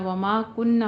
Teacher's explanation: जितना माँ को लंबा उतना ही ना को भी पढ़ना है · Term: अलिफ मद्दा